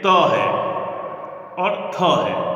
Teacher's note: तकार और थकार इन दोनों का जो उच्चारण स्थान है वो है दंत। ऋतुलसानाम दंताः, ये जो नियमितीकरण है, जो ये जो नियम है उसके तहत जो है त और थ इन दोनों का उच्चारण स्थान क्या है, दंत है, दोनों ही दंत्य वर्ण है।